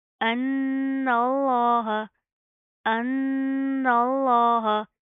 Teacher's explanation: ان اللہ، ان اللہ، نون کے اوپر شد آ رہی ہے، پہلے گناہ کریں گے، لفظ اللہ کو موٹا پڑھیں گے کیونکہ اس کے ماقبل زبر ہے